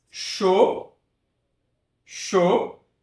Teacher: perceba que essa consoante final ela não é pronunciada